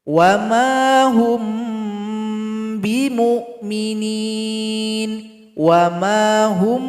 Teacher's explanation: Kajiannya adalah mim sukun. Kalau ada mim sukun berjumpa dengan huruf ba, dibaca juga dengan berdengung. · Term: ikhfa syafawi